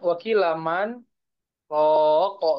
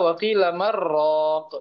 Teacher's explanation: Tapi kalau yang syubah wakilamar roko idgham langsung masuk pada huruf roi